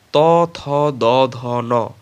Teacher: উচ্চারণের সময় জীভের অগ্রভাগ অগ্রভাগের দাঁত বা দন্তমূল স্পর্শ করে এজন্য এগুলোকে দন্ত ধ্বনি